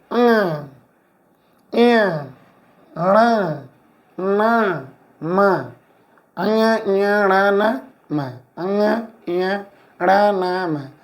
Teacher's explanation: इनका उच्चारण केवल नाक से ही होता है इसलिए इनका नाम नासिक व्यंजन पड़ा है